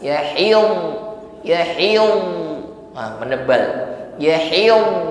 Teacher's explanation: Makhrajnya dhad di hafatul lisan, ya, lidah bagian samping atau tepi lidah ditekan pada gigi geraham atas